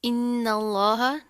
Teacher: लफ्ज़ अल्लाह से पहले ज़बर आ रही है तो ये मोटा पढ़ेंगे, ठीक है, इसको बारीक नहीं करना।